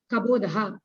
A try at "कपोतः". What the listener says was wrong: not kabode see pronunciation you have to correct it's not kaboda what is kaboda kapota katora vyanjanani mridu vyanjanani that difference is there I've been saying from the beginning kapota kabodaha what is kabodaha means